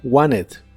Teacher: en inglés americano es muy común pronunciarlo sin la t y suena como Wanted